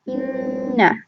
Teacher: It's held for 2 counts in the case of shadda. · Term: Ghunnah